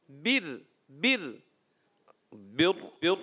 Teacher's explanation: ज़बान का सिरा ऊपर सनाया और रुबाई की जो मसूड़े होते हैं वहाँ ज़बान लगानी है